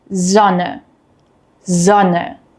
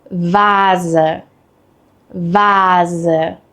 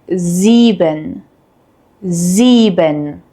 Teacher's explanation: We have a voiced S sound, which is a soft buzzing sound. This sound uses your vocal cords, similar to the English Z in zoo.